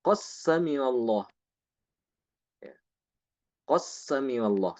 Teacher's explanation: Imam Hisham membaca dengan mengidghamkan dal ke sin